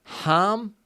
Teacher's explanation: there's an r in there so you extend the a